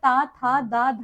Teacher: जिन वर्णों का उच्चारण करते समय जीभ ऊपर के दांतों के पिछले भाग को स्पर्श करती है उनको दंत वर्ण कहते हैं